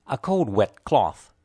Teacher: the important content words are cold and cloth the unstressed words are a and wet